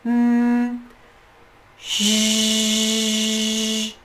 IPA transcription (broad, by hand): ʒ